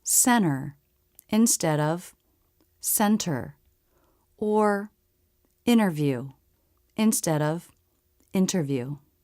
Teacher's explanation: Also, we often drop the T when it comes after an N.